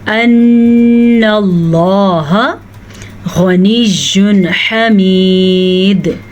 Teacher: غین کو پر پڑھیں گے. یہ 2 حروف مصالیہ میں سے ہیں جو کہ ہمیشہ ہی پر پڑھے جاتے ہیں.